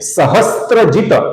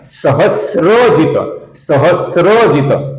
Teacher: ये स्त्री का स्त्र नहीं है, ये है स और र अर्थात स्र।